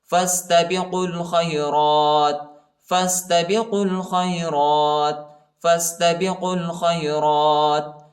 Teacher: فا کو سین کے ساتھ ملائیں گے، الف نہیں پڑھا جاتا، الف پر حرکت نہیں ہے